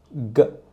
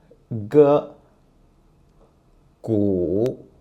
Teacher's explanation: When you pronounce G first, you need to retract your tongue and produce a schwa sound, at the end.